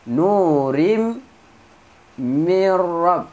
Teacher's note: tanwin bertemu mim, masukkan tanwin ke dalam mim, dengung dua harakat · nun ke dalam ra tanpa dengung